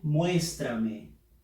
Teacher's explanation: Fuerza de voz en la sílaba mues.